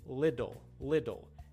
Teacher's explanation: Because you're saying it so fast, your tongue doesn't have the time to create the T sound. The T sound is created when your tongue stops the air coming out of your throat. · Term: flap